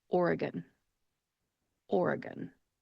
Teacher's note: The E in the middle of the word is a schwa type vowel sound because it is the unemphasized syllable. So when you pronounce that, make sure to take that E and turn it into a schwa sound.